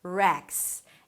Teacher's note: The R sound is a strong R because it opens up to a vowel and the vowel right after is the 'eh' as in 'red' - "reks".